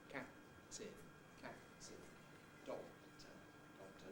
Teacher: The release of the first one takes place during the whole of the second one, and therefore you can't hear it. And all you can hear is an approach for a P, cap, and a release for a T. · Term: release masking